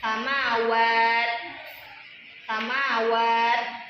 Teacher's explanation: Huruf ta ini tertahan tapi ee anginnya tetap mengalir.